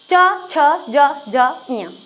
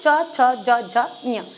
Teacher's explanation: तालू होता है हमारे मुंह का ऊपर वाला भाग जिसके ऊपर हमारी जीभ का पिछला वाला भाग थोड़ा सा टच हो जाता है · च छ ज झ ञ ये सारे कहां से बोले जाते हैं तालू से बोले जाते हैं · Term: च वर्ग